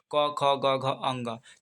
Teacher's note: क वर्ग है जो कंठ से उच्चारण होता है।